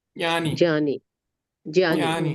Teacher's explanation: यहां नहीं यहां यहां नहीं जानी जानी नहीं होगा। जा बोलने के लिए बस जीभ लगानी है। बोलना नहीं है जा को। ज्ञानी ज्ञानी हां ज्ञानी ज्ञानी यानी ज्ञानी नहीं बोलना है।